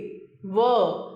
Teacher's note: व, दंत और होंठ, जीभ नीचे के दांतों से लगी हुई, नीचे का होंठ ऊपर के दांतों को छूता हुआ।